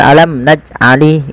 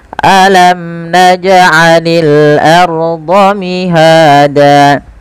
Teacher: Alam, jelaskan mimnya karena dia izhar syafawi. Naj'ani, pantulkan jim ketika ia berharokat sukun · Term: qalqalah